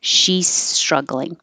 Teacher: okay if you instead of making it very clearly she's struggling you don't have to make a perfect z and she's it can lose its voicing change to an s